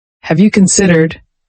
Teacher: Use a rising intonation for the question, making it inviting.